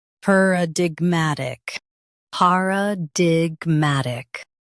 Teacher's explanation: Stress gmat and keep di light.